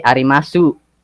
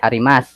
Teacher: um arimas they don't say arimasu no they just say arimas so that sound at the end is like the consonant s itself